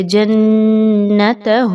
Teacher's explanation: آپ نے نون مشدد کے غنّے اچھے سے کرنے ہیں